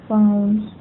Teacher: यहाँ पे हमारी आउ डिप्थोंग की साउंड है